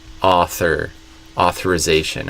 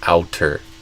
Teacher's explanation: the th kind of came out like a T. So I would say author, authorization, and they kind of did outer.